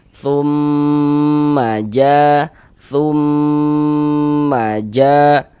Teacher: Kita panjangkan sejak kita gunahkan kira-kira sepanjang dua harakat. Tumma ja ja dibaca panjang. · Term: ghunah musyaddadah